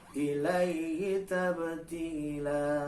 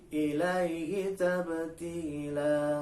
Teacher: Tab itu qalqalah, ba pemantul.